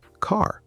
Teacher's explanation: In British English, the R is often silent. You don't say it strongly.